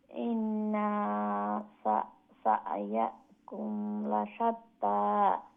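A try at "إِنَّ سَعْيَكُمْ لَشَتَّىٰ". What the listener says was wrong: না, নাটা লম্বা হয়ে যাচ্ছে। ইন এইরকম। শর্ট হবে। ওই যে সা ইয়াকুম, এই সায়াকুম বলে আপনি অভ্যস্ত হয়ে গেছেন, এখন আপনার একবারে হবে না। সা ইয়াকুম শব্দটা আছে, এইটাকে দুই ভাগে বিভক্ত করে দিবেন।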